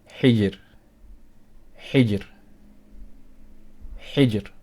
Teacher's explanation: So here we are going to pronounce our ra weak